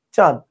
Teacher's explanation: চন্দ্রবিন্দু ছাড়া উচ্চারণ করলেও চের উচ্চারণ কিন্তু চই হবে। চন্দ্রবিন্দু দিলে কি হবে? সামান্য নাকের দোতনা আসবে। · চন্দ্রবিন্দু ব্যবহার করলে জাস্ট নাকের একটা হালকা প্রেসার আসে কিন্তু বর্ণ যা ছিল তাই থাকে।